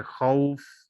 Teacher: یہ واو جو ہونٹوں سے ادا ہوتا ہے، ہونٹ گول کرنے سے، یہ متحرک اور لین۔